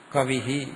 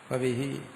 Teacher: ഇകാരത്തോടുകൂടി ചേർത്ത് ഉച്ചരിക്കുമ്പോൾ നമ്മൾ ഇഹി എന്നാ ഉച്ചരിക്കുന്നു. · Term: വിസർഗം